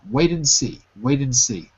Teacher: Drop the D. Don't say the D.